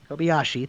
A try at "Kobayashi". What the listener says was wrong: There's a sh in there. Kobayashi. You have it spelled out.